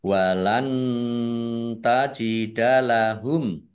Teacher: nun sukun bertemu dengan huruf ta bacaan Ikhfa dibaca samar-samar